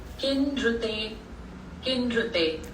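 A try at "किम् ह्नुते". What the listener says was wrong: किन हुनुते, हरू नहीं, हनु, हनु, हनु. आह्निकम, हरू नहीं. See, it is not her and ru. It is not r. her and na.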